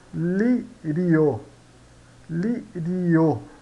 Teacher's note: Aqui nós temos o I semivogal e o O vogal. Então, semivogal mais vogal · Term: Crescente